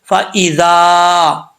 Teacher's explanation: فا ایذا، یہاں پہ مد ہے، اس مد کو تجوید کی اصطلاح میں مد منفصل کہا جاتا ہے، 2 سے 2.5 الف کی مقدار لمبا کر سکتے ہیں، اور بعض اوقات جو تجوید کو نہیں جانتے اس کو چھوٹی مد بولتے ہیں۔